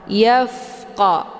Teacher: huruf fa ini adalah bagian daripada sifat hamas. Maka dia ada desis anginnya yang agak samar-samar. Yafqa. Jadi cara bacanya itu ditahan, jangan dilepas.